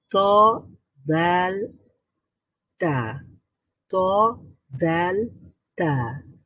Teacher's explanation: ত, দাল and ta come out when the tip of the tongue touch on the root of the two top front teeth. আচ্ছা, আমাদের একেবারে ফ্রন্টের যে দুইটা দাঁত আছে একেবারে টপে, একেবারে আপার আপার টিথ দুইটা, এই দুইটা দাঁতের একেবারে গোড়ার সাথে সাথে লাগবে, তখন লেগে উচ্চারিত হবে ত, দাল, তো তা।